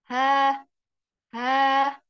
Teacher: hak besar, dia keluar dari tenggorokan bawah